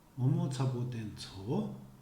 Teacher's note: All syllables except the last one are dampened.